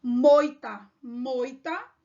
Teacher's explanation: moita seria um exemplo de ditongo decrescente Por quê começa do maior para o menor começa pela vogal e depois para semivogal